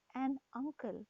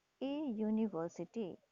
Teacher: Now can you guess why we have used a in front of a vowel that is university, because the U at the beginning of university sounds like U, YOU, which is a consonantal sound